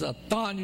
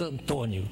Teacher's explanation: Nós aqui nasalizamos a vogal.